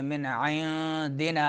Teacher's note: नून साकिन आ रहा है, उसके बाद दाल आ रहा है हरूफ इख्फा में से, तो नून को छुपाएंगे। मिन इंदिना इख्फा होगा।